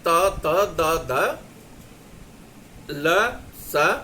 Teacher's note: दांत से, मतलब जीभ आती है, दांत को स्पर्श करती है। त वर्ग, त, द, ध, ल, स।